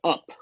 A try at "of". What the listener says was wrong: the V sound in of, right, that F should be a V sound. It sounded to me like a P sound.